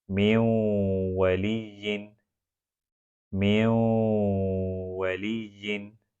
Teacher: اب اس کو لکھا جاتا ہے من وَلِيٍّ، نون سکون ہے اور دوسرا واو ہے، نون سکون کو واو میں داخل کیا جائے گا تو یہ ادغام، اور پھر اس کو پروناؤنس کیا جائے گا ناک سے 2 حرکتوں کی مقدار، تو یہ ہوگا ادغام بالغنہ من وَلِيٍّ۔